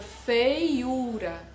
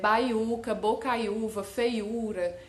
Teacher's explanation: Outra coisa, se antes dessa letra, né, do I ou do U, tiver um ditongo, não vai ser acentuado também essa letra, como na palavra feiura, tá? Antes do U, eu tenho um ditongo aí do E com o I